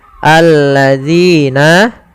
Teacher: Nah, pada lafal nina, minina ada ya mati yang didahului dengan kasrah atau ya sukun, maka ini hukumnya mad tabi'i, yaitu kita panjangkan 2 harokat. Alladzina, yaitu zina, panjangnya 2 harokat.